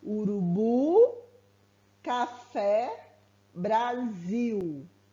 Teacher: Para que ela seja oxítona, a última sílaba será a tônica.